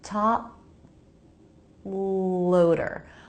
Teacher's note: My lips come together for the P. That stops the sound.